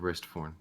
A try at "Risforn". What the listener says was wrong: Why do you keep putting a T in there? You said Wristforn.